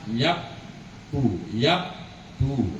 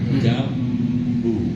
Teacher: Jadi kapan saja Bapak bertemu nun sukun atau tanwin kok depannya berupa ba. Maka bacanya iqlab dirubah jadi mim dan berdengung.